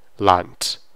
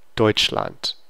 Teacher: In German, no matter how loud you're speaking, an end of the word D is always going to be T.